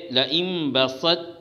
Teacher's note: بسطہ جیسی مثالوں میں ادغام ناقص ہوگا قلقلہ اور ابدال کے نہ ہونے کی وجہ سے